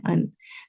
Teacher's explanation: زبان کی جو دونوں سائڈز ہیں وہ اوپر کے تالو سے ٹچ ہو رہے ہیں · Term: مخرج